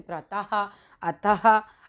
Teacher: विसर्ग की बात आ जाती है, इसका उच्चारण ह में किया जाता है, जैसे प्रातः, अतः आदि।